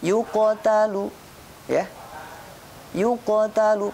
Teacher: Sugro itu pantulannya kecil ketika huruf qalqalah sukun berada di tengah kalimat dan bacaannya diteruskan.